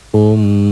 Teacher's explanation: Cara bacanya dibaca double karena bertasdid. Dengung ke hidung, ada gunnahnya, ada madnya, ada panjangnya, 2 sampai 3 harokat, atau 1 sampai 1 alif setengah.